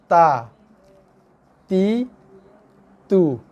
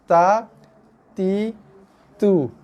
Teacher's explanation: Okey, tekan sikit. Belakang gigi kena belakang gigi, dia akan kena belakang gigi dan juga kena gusi tempat keluarnya gigi tu. Situ tekan, lepas keluarnya ta, ti, tu. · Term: makhraj bagi huruf ta